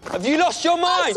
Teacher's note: The ch sound appears when a word ending in T is connected to a word starting with Y.